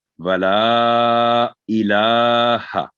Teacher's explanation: वला, ये आवाज ऊपर जा रही है, वला ई जेर जो नीचे के बाद है, इसको मिक्स नहीं होना चाहिए। वला इलाहा, लाम पर छोटी मद है, मद सगीरा, तो 3 से 4 सेकंड